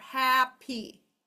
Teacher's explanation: This says hap and this does say e. However, when I say the word happy, the p is most definitely in the second syllable